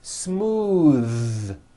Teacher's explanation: Believe it or not, the TH sound in smooth is voiced.